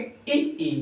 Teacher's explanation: जैसे आप ई बोलेंगे तो आपका जीव का जो अगला भाग है, जो अगला भाग होगा सीधे आपके एक स्थान पर टच हो रहा है, वहां पर बल पड़ रहा है। तो इ, ई, ए, ऐ इनका बल पड़ता है अगले भाग पर, इसलिए इनको अग्र स्वर कहा जाता है।